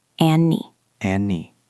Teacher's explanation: Drop the D in and. Elision. And I. Then link the N to the I.